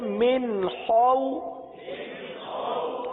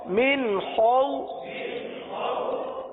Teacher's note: خا حلق سے ادا ہوتا ہے، حلق کے اوپر والے حصے سے ادا ہوتا ہے. خا کو پورا ادا کریں گے کیونکہ یہ حروف مستعلیہ میں سے ہے، لہذا پڑھیں گے من خو.